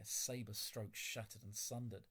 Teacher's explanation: I've identified the sibilants again, that imitates the sound of these sabres flashing through the air